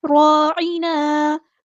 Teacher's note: عین کو وسطی لیکن مڈل تھروٹ سے ادا کریں گے